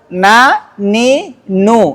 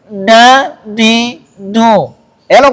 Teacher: artinya ada suara dengung menyertai huruf mim dan nun ketika dia ber harakat